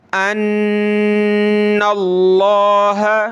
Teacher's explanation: یہ لفظ اللہ سے پہلے زبر ہے یعنی نون پر تو موٹا کریں گے